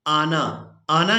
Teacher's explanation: आना, आना ही इसको अदा करेंगे। इसको आना यानी नून को खींचकर अदा नहीं करेंगे